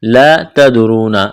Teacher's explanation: لا تدرون الف مدہ ہے، ایک الف کے برابر کھینچنا ہے، تا کو باریک کرنا ہے، دال پر قلقلہ کریں گے، را کو موٹا کرنا ہے